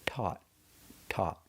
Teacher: You start with a real T, ta, and you finish with a stop T.